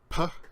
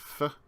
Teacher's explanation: The labial stops are called labial because the labia are lips in Latin, and they're formed, these consonants, formed putting the lips together or touching the lips to your teeth